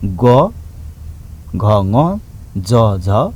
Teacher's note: स्वर चिम्टीमा चाहिँ बढी कम्पन हुन्छ, त्यस्तो अवस्थामा आवाज आउने गर्दछ।